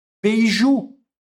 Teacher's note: Como ele termina em u, a tônica fica na última sílaba. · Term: oxítona